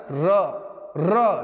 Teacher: और र एक ऐसा, पूरे व्यंजनों में एक ऐसा व्यंजन है जिसको आप एक बार में बोल ही नहीं सकते, एक बार र नहीं बोल सकते। जब बोलेंगे तो जीभ कांप जाएगा, कई बार बोला जाएगा। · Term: प्रकंपित